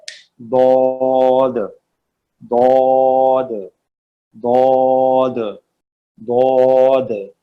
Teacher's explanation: जबान का किनारा पूरा, जो आपकी साइड है, सही है जी, लेफ्ट राइट या बोथ, ऊपर के दाढ़ों के अंदरूनी हिस्से से मिले तो अदा होता है दौद, दौद, दौद, दौद।